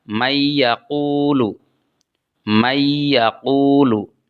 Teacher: Ada nun sukun, kemudian diikuti oleh ya. Maka nunnya diidghamkan atau dimasukkan ke dalam huruf ya. Sehingga dibaca mayyaqulu.